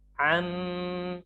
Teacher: Am, kemudian ada tasdid mim. Ghunnah dibaca ditahan selama 2 harokat.